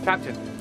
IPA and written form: ˈkæptɪn (captain)